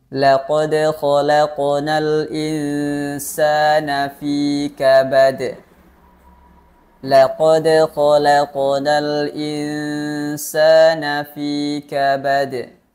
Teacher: di akhir ayat atau dalam keadaan waakaf itu huruf dal juga disukunkan dan menghasilkan sifat Qalqalah huruf Dal